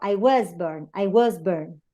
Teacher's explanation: this word is pronounced was in isolation, but it's pronounced with a schwa when it is in context